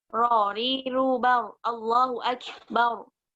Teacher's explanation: ujung lidah kita itu hanya bergetar sedikit satu kali aja di langit-langit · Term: satu kali getaran halus